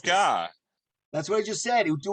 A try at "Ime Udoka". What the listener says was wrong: No, you said Udoku. You said Udoko. Yes, you did. just said Ime Udoko.